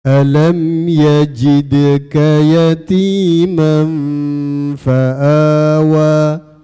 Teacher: Di situ ada pantulan dal, huruf dal, itu huruf pantul.